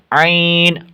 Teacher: ہا اور عین ایک ہی جگہ سے ادا ہوتے ہیں، وسط حلق سے